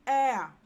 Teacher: the sound a combines with the schwa sound gives you the sound air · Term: thrift tongues